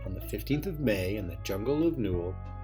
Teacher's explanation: that's two unstressed syllables followed by one stressed over and over